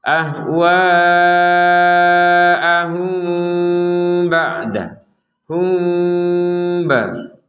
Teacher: Ada dengungannya ya, karena samar itu adalah antara dengung dan jelas. Jadi tetap ada dengungannya walaupun tidak 100%.